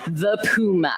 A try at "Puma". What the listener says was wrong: It's not really a correction because it's so minor, but it's supposed to be Pew as in P-E-W as opposed to Poo as P-O-O. Apparently, that's what they tell me.